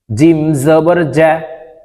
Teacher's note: জিম জিহ্বার মধ্যখান থেকে উপরের তার বরাবর উপরের তালের সঙ্গে লাগিয়ে উচ্চারণ করতে হবে